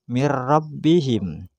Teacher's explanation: hanya dua huruf yaitu ro dan lam berarti di sini mirbihim suara n mati masuk ke ro tapi tanpa dengung